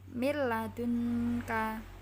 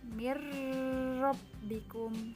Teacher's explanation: bertemu huruf lam atau rok membacanya digabungkan tanpa dengung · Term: idgham billaghunnah